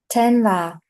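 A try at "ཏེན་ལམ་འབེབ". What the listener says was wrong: This goes together. This is a word of 3 syllables. Tenlambep. Yeah, this is a little hard because you have a pre-nasal here.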